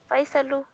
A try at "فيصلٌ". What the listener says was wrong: Tanween hai, Faisalun. हाँ या तो simple Faisal पढ़े या Faisalun पढ़े. Faisalu गलत है.